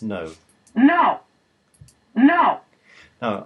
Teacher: what we're hearing is not a little bit of a fall but quite a dramatic fall · I think you can hear that very clearly as a very abrupt fall in intonation. It goes, no, not no.